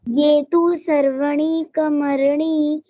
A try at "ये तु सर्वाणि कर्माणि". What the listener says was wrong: नहीं, सर्वाणि, ये तू सर्वाणि, वाह बड़ा है ना, सर्वाणि कर्माणि, ठीक है।